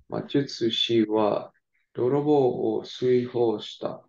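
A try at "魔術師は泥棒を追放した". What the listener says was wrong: Hi. Perfect.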